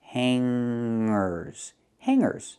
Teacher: we don't pronounce the hard g sound. We don't say hangers. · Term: nasal sound